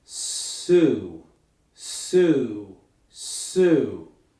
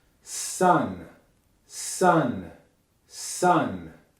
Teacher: Do you feel how your vocal cords only start to vibrate once you get to the vowel? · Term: voiceless